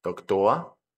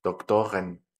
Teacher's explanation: Nótese aquí también que como la terminación R se convierte en A, Doktor, cuando le agregamos esta EN, la R vuelve a tener una característica de sonido consonántico